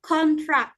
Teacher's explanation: This is noun because stress on the first syllable